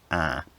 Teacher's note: it's consistently actually a monophthong